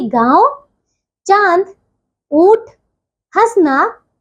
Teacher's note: यह है अनुनासिक मतलब इसका उच्चारण नाक और गले दोनों से होता है।